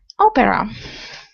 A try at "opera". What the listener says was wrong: Good. Nice pronunciation.